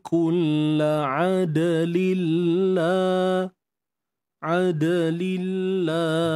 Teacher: Untuk dal yang bertanda sukun ni ada qalqalah, lantunan kecil.